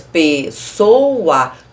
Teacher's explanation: Na palavra pessoa não tem semivogal, que eu separo em 3 sílabas, pessoa. todas as vogais são pronunciadas com intensidade.